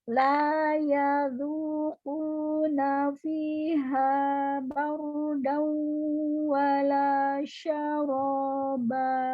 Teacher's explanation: Iya, karena idghamnya idgham naqis. Ya, tidak sempurna masuknya ke huruf waw, masih ada sisa sifat gunnah yang harus masuk ke khayshum. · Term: idgham bigunnah